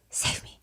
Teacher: it sounds like a very breathy, low, save me. You can barely hear him. You can see his lips moving. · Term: breathiness